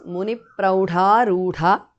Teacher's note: Visarga is dropped in the end and dha is mahapranaha.